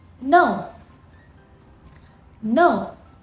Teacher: the fourth tone is a falling tone, from a high point to low point